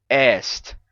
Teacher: Temos esse som aqui do E aberto, como em est. Est. Então, como esse daqui fechou para I, ele deixou o espaço do E livre.